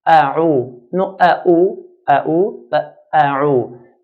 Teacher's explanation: Alif, ayn and then dal. Alif is pronounced from the bottom part of the throat, bottom part of the throat, and ayn from the middle part.